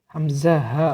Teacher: হলকের শুরু হইতে হামজা হা উচ্চারিত হয়